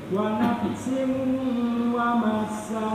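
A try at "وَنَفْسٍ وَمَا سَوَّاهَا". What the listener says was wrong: Ish, wa ma, panjangin.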